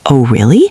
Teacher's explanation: Notice that rising tone on really. It shows you're engaged.